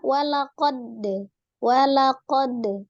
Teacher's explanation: huruf Dal ini termasuk huruf yang siddah siddah berarti suaranya tertahan tapi dia memiliki sifat khusus Qalqalah dipantulkan ketika sukun mana yang